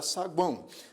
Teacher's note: contém duas sílabas nós dividimos assim as sílabas da palavra saguão nós temos aqui na palavra saguão o tritongo u a o então nós temos aqui a semivogal o a vogal a nasalizada · nós temos aqui a semivogal o a vogal a nasalizada e a semivogal o